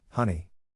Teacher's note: To pronounce honey, have in mind that the size of the syllable indicates where the accent or stress is. In this case, the accent is in the first syllable, corresponding to hoon.